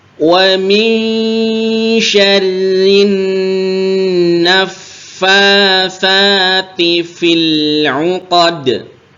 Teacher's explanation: Fil, ini lam sukunnya ditekan ya, seperti yang sebelum-sebelumnya juga fil, jangan sampai fil 'uqad itu sudah betul lamnya tapi sifatnya hilang karena lamnya kok jadi memantul. Lam itu tidak tertahan dan tidak mengalir, dia di antara tertahan dan mengalir atau tawasud bainiyah.